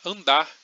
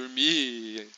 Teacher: a gente nunca pronuncia de fato esse R de maneira forte no final das palavras